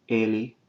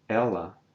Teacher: you can hear that difference between the open and close E, or the close and open E, I should say, if you contrast the pronouns ele, close, and ela, open